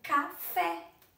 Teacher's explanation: é aquela que a gente pronuncia com mais intensidade certo e quando ela é pronunciada com mais intensidade lá na última sílaba ela é chamada de oxítona · sílaba tônica, ou seja, a sílaba mais forte está na última, ela é oxítona. Por exemplo, café é a última sílaba, é fé.